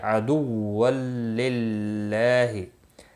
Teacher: تین تشدید ایک ساتھ میں آئے ہیں، اس لیے تھوڑا سختی کے ساتھ پڑھیں تاکہ تشدید ظاہر ہو۔ للہ اللہ کا لام زیر کی وجہ سے باریک پڑھا جائے گا